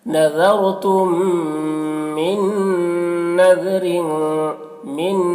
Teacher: رائے ساکنہ سے پہلے زبر ہے، تو نذرتم، یہاں پہ دیکھیے میم ساکن کے بعد میم ہے تو میم کو میم سے ملا کر غنہ کے ساتھ پڑھیں گے، اس کو ادغام شفوی کہتے ہیں